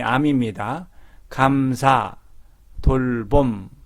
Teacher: 다만 암은 비음입니다. 코에서 콧구멍에서 바람이 나와야 합니다.